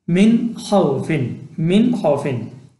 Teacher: If after nun, sakin, and tanwin there is any of the letters of halki, then nun, sakin, and tanwin should be read without gunna and ikhfa, but should be read according to makhraj clearly, and this sort of reading is called izhar.